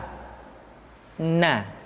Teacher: Caranya menyentuhkan ujung lidah kita di antara posisi ro dengan la. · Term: huruf na